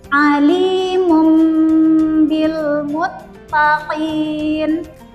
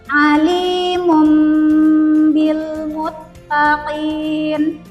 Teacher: Kita ganti nun sukunnya menjadi huruf mim dan kita gunahkan atau kita dengungkan dua sampai harakat. · Yang awalnya ini nun kita baca, kemudian kita ganti menjadi huruf mim, berarti menjadi mum. Kemudian kita gunnahkan 2-3 harokat.